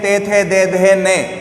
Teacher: जब हम इस वाली लाइन को बोलते हैं ते, थे, दे, धे, ने, तो हमारी जो जीवा है वो हमारे दांतों को स्पर्श करती है